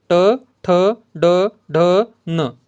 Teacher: जिभेचा शेंडा उलटून टाळूच्या वरच्या भागाला टाळूच्या वरच्या भागाला मृदेला स्पर्श करून होणाऱ्या उच्चारांना मूर्धन्य वर्ण असे म्हणतात